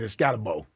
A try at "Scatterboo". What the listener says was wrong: Well, it's Scatterboo. It is spelled Scatterbo. It is pronounced Scatterboo.